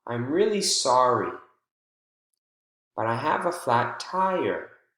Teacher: the voice jumps on the focus word and then falls slightly at the end